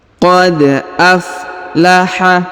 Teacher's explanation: huruf da berharokat sukun, maka kita pantulkan atau kita qalqalahkan